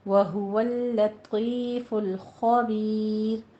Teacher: رائے مفخم تھی ہمارے پاس، لیکن یہ مرقق ہو جائے گی کیونکہ پیچھے یا ساکن ہے اور ہم وقف کر رہے ہیں